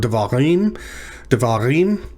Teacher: the emphasis is on the last syllable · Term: tonic syllable